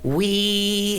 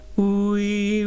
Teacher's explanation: We could go wee and squeezy, but we don't want to do that. We keep the oo shape.